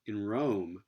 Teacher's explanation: So the claim here is that in a sequence like in Rome, that you're getting retroflexion of this nasal before the retroflex consonant r